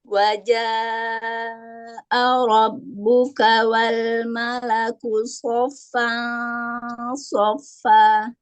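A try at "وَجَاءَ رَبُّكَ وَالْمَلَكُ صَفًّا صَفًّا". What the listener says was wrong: Nah, fa-nya 2 harokat Bu. Sofa bukan sofa kan baru 1. Mat iwat 2 harokat ya. 2 rokat atau 1 kali ayunan. A, ba, ta, sa, ja, ha.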